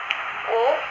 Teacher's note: दीर्घ पश्चिम वृत्ताकार भी है क्योंकि इसमें ओष्ठ कुछ गोल हो जाते हैं, परंतु ऊ से, जो बड़ा वाला ऊ है, उससे कुछ कम होते हैं।